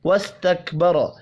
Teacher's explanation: وَاسْتَكْبَرَ کاف اور سین ساکن ہے, قلقلہ نہیں کرنا. را کو زبر کی وجہ سے پر پڑھیں گے